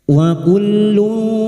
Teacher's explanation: Wa hanya masuk tanpa ditahan lama-lama tanpa mendengung.